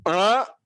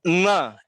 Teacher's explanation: अण में जीभ पीछे की तरफ है, न में आगे की तरफ दांतों के पास है।